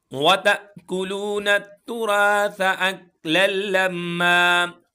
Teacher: جھٹکا دے کے پڑھیں گے. حمزہ ساکنہ ہے, جب حمزہ ساکن آ جائے تو جھٹکا دے کے پڑھتے ہیں. لو ایک الف کے برابر کھینچیں گے.